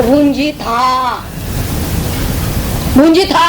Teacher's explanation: म्हणजे विसर्गाचा काही उच्चारच नाही होत